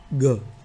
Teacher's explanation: ગ બોલતા પડઘાનો અવાજ પણ આવે છે, સાથે અલ્પ પ્રાણ એટલે કે પ્રાણવાયુનો ઓછો ઉપયોગ થાય છે. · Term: ઘોષ અલ્પ પ્રાણ